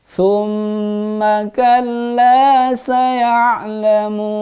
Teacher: ma-nya tidak panjang. Hanya gunnah doang.